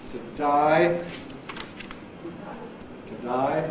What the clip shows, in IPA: təˈdʌɪ, təˈdʌɪ